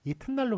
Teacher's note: 그 경계가 딱딱 구분이 안 가게 되거든요. 그러다 보니까 리을을 디귿으로 이렇게 소리 내면서 디귿은 자음성이 아주 강하거든요. 그러면서 딱 음절의 경계를 딱 세워주는 겁니다.